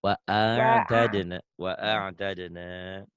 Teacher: ini ainnya neken kayak keselak